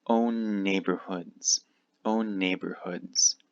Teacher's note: These two N's connect.